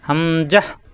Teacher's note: হা মেলবে মেমের সাথে, হাম, যা মেলবে হায়ের সাথে, লাস্টের হরফ তা হা হয়ে যাবে। জাহ, হামজাহ, দ্রুত উচ্চারণ হবে, কোনো টান হবে না।